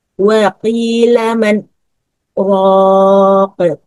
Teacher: Penerapan saktah pada ayat ini dimaksudkan menjaga izhar nun mati. Jika nun mati diidghamkan kepada huruf ro, khawatir akan menjadi kata marraq yang sesuai dengan wazan fa'ala.